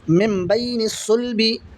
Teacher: दो ज़ेर की तनवीन दिख रही है, दो ज़ेर की तनवीन के बाद में बा है तो यहाँ पर इक़लाब होगा, यानी गुन्ना के साथ पढ़ेंगे और नून की आवाज़ को मीम से बदल कर पढ़ेंगे